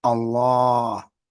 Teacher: this Allah is pronounced Allah because this dagger Alf elongates the vowel for two beats